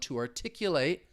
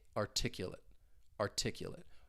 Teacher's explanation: with the verb, you have that long A sound, to articulate, whereas with the adjective, now we have that I, articulate, articulate.